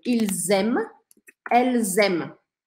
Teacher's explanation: apesar de ter um monte de letra depois, eu não vou ouvir nada disso depois. A última coisa que eu escuto é o M de novo.